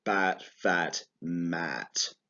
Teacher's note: we talked about which is the ah sound which is with a more open mouth go ah but with the lips coming out to the side so it's more horizontal shapes